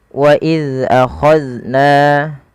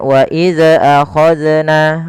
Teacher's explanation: Jangan wa iza akhadna, nah, memantul zalnya. Karena salah satu sifat zal itu tidak boleh mantul, karena zal bukan huruf-huruf qalqalah, maka tidak boleh terpantulkan ketika melafalkannya.